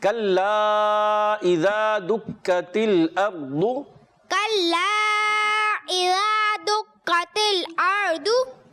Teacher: कल्ला के बाद हमजा है तो इसको आइन से नहीं पढ़ना, हमजा क्लियर करेंगे।